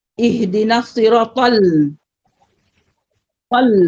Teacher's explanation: Lam tu tetap nipis. Bukan tal misalnya. Bukan nipis. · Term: lam tetap nipis